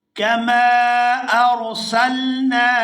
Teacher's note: یہاں میم کو الف مدہ کی وجہ سے کھینچ کر ادا کریں گے